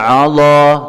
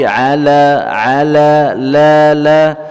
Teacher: Ala di sini huruf ain, kemudian ada huruf lam. Ya, lamnya tipis, ainnya juga tipis